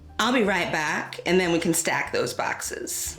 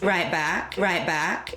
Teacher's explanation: bat retraction or the a vowel being pronounced further back in the mouth